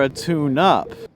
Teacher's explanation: each syllable is held for the same amount of time